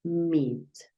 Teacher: Alargas un poquito el sonido.